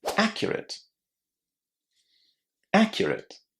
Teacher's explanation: A lot of students put the stress on the second syllable, but that's not correct. The stress here is on the first syllable.